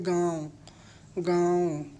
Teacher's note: थोड़ा सा मुंह से बोलते थोड़ा सा नाक से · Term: अनुनासिक